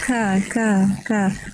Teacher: Kaf iya tipis-tipis aja kalau untuk huruf Kaf Tetapi dia tetap mengalirkan nafas